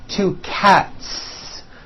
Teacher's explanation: cat ends with an unvoiced T TT one cat two cats again the s ending is unvoiced